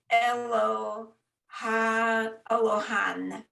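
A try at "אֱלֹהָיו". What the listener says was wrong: Have. Have. It ends with a vav. So this is a vav because it's the same length as where the line is.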